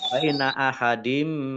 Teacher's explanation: kasroh tanwin bertemu dengan huruf mim bacaan idgham bi gunnah masuk dengan mendengung.